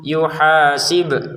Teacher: Perhatikan bnya dipantulkan. Jangan sekedar yuhasibkum ya kan enggak ada pantulannya. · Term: baknya dipantulkan